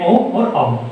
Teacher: कंठ प्लस ओष्ठ यानी होठ और गले दोनों से जो मिलकर बोला जाता है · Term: कंठोष्ठ स्वर